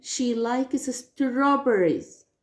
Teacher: When I say she likes strawberries, I focus on strawberries.